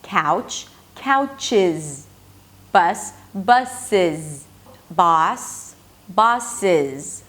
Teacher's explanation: So we actually add an I sound and a Z.